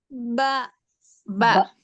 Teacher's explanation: با دونوں ہونٹوں کے تر حصے سے ادا ہوتا ہے.